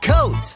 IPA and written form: kəʊt (coat)